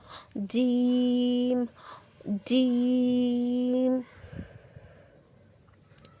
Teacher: جب زبان کا درمیانی حصہ اوپر والے تالو سے لگے تو جیم ادا ہوتا ہے۔ جیم، زبان کا درمیانی حصہ اوپر والے تالو سے لگانا ہے